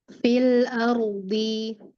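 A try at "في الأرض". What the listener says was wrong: Nah di pangkal lidah naikin lagi. Ardi.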